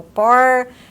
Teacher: um fone que vai representar o R retroflexo, que é o R que nós falamos aqui